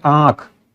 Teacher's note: अनुनासिक में कैसा उच्चारण होता है, मुंह और नाक दोनों से हवा निकलती है